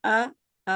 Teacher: پہلے والا آ کو لمبا نہیں کرنا